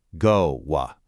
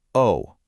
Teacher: In Mandarin, it's a pure sustained vowel.